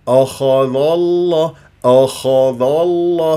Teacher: اللام من اسم الجلال الله تفخم ليش لما مسبوقه بفتح الذال مفتوحه فممكن انا اقول اخذ الله